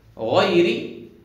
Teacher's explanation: الغين حرف من حروف الاستعلاء، حرف من حروف التفخيم